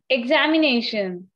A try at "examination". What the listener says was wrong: See here, the sound is E, not A. We say exam. I have exam, we say. But the sound is actually exam, E. Examination.